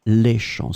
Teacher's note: So as you can see here, it's the plural form, les champs, with the S in the end, but it's still the same pronunciation because we don't pronounce the final S. Les champs, so it can be the singular, le champ, or then les champs, it will be the same pronunciation.